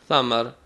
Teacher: نہ بھاری ہے نہ سیٹی ہے، زبان کی نوک اوپر کے دانتوں کے کنارے سے لگے گی، ثمر، بغیر سیٹی کے، بغیر بھاری کیے ہوئے۔